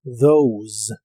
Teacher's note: La TH se pronuncia como una D vibrante y la O como OU. Al final termina con un sonido vibrante de la S o Z inglesa.